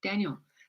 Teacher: Emphasis on the first syllable